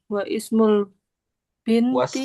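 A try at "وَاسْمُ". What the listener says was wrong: Wasmu. Kalau ini alifnya nggak usah dianggap, langsung aja wasmu gitu.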